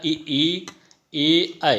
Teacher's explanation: ऐसे स्वर जिनके उच्चारण में जो जीभ होती है, जीभ का अग्रभाग काम करता है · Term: अग्र स्वर